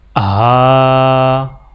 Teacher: کھڑا زبر جس الفابیٹ کے اوپر بھی ہوگا اس الفابیٹ کو 1 الف کے برابر کھینچ کے پڑھا جائے گا، جیسا کہ یہاں پر ہا کے اوپر کھڑا زبر ہے تو ہا کو 1 الف کے برابر کھینچ کے پڑھا جائے گا